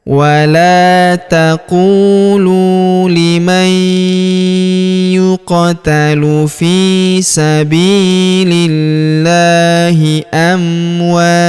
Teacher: huruf ta atau tunnya di sini kita berikan hembusan tipis ya karena kita berhenti